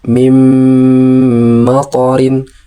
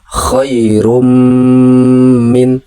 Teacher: Berikutnya ada idgham bigunah. Melebur disertai dengan dengung.